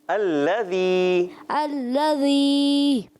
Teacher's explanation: موٹا نہیں کرنا، نلذی موٹا کر دیتے ہیں